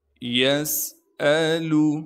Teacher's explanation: یسألو، یا کو سین سے ملائیں گے کیونکہ سین ساکن ہے، سین میں سیٹی ادا کریں گے۔ حمزہ کو بغیر جھٹکے کے بغیر کھینچے پڑھنا ہے، لام کو بھی بغیر کھینچے پڑھیں گے۔